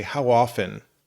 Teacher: We kind of don't really say the T very strong. We say how often.